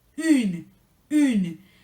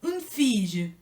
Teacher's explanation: se va a pronunciar une, con U francesa, acuérdense, lengua pegado a los dientes de abajo